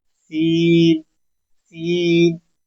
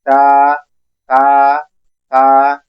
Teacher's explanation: ये खूब सीटी से पैदा होता है, सीन सीन, और यहाँ सीटी नहीं होती, ता ता ता